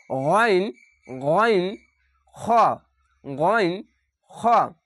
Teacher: হালাকের বা কন্ঠনালীর শেষ ভাগ হতে উচ্চারিত হয় শেষভাগ বলতে এই তিনটি ভাগের মধ্যে সব নিচে স্থল থেকে উচ্চারিত